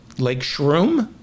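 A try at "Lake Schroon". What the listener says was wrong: No, Shroon with an N.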